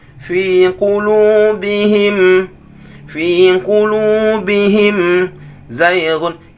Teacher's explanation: him itu adalah gunnah tapi naqisah, sedikit saja, tapi nggak boleh lebih daripada itu.